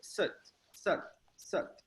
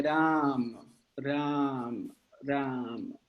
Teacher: O mukta, ele é fechado, além de fechado, ele é curto. Então, ele é sat, sat, sat. O A aberto, ele além de ser aberto, ele é longo.